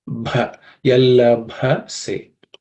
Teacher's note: That has to be aspirated because that's the fourth letter in the per class of sounds or per varga sound consonants.